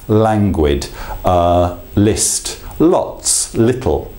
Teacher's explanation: the use of the light L that primary front L